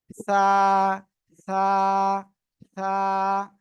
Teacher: জিহ্বার আগা, এই সামনের উপরে দুই দাঁতের আগায় লাগান, লাগান, লাগান, লাগিয়ে উচ্চারণ করতে হবে। হালকা বাতাস বের হবে।